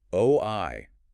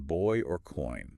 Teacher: Oi starts rounded and moves towards the unrounded eye.